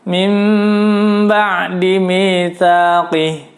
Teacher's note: Membalik bunyi suara nun sukun menjadi suara mim sukun dan dibaca tahan 4 ketukan. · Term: iqlab